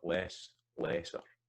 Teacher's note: So we can hear, even though that's when you have two syllable, the vowel and the stressed part is lengthened a wee bit